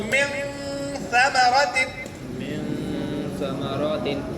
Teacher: ان کے نون کی ساؤنڈ کو ناک میں چھپا کے پڑھیں گے. ان کی جگہ ان کہیں گے. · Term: اخفا